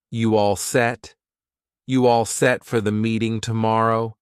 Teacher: to show it's a question, we can use a rising intonation at the end to indicate it's a question.